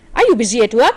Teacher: Look at the rising intonation. It's a question. Yes or no question.